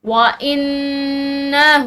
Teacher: نون مشدد ہے تو یہاں پر غنہ کریں گے